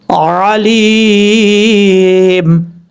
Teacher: مد عارض وقفی بھی ہو سکتی ہے. 2.5 الف کے برابر آپ لمبا کر سکتے ہیں